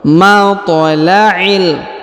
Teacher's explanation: huruf ta berharokat sukun, maka dia harus dibaca pantul atau dibaca qalqalah